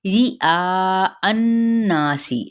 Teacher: रा बारीक पड़ा जाएगा